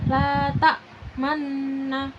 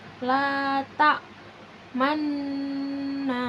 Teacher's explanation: Ismam itu ketika ada kalimat seperti ini, la tak mana gitu, nunnya itu dibaca ismam. Ismam itu artinya mencucu, dan ismamnya setelah idgham gunah.